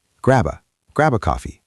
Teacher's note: Connect the B to the A.